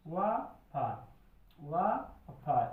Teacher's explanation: इनका उच्चारण स्थान है दंत और ओष्ठ। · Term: दंतौष्ठ